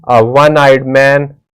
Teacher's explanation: one begins with the consonant sound of w o is a wall but the sound it's giving is of w that's why we will use the indefinite article a with it.